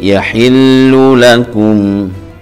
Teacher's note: idhar syafawi, jelas di bibir karena mim sukun bertemu dengan alif